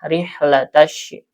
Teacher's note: Ini ada ha ya, nafasnya atau anginnya mengalir karena dia bersifat hamas ya.